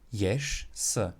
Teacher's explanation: And at the end of the word, or it's also referred to as the word border, ješ, s. So the voiced ž will change to the unvoiced sh